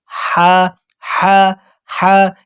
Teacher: حلق سے بالکل باریک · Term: باریک ہا